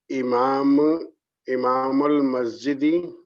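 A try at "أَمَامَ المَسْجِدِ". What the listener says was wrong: amam al-masjidi. It's with a fatha. If you were to a kasra, imama, it means the leader of the Jamaat, imam. Amam means in front. Imam means different.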